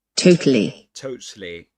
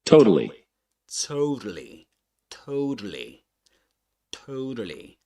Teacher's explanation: the second T is a flap T which means that um you don't actually You don't um you pronounce the T as a as if it were a kind of D sound.